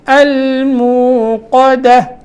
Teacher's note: قاف موٹا دال باریک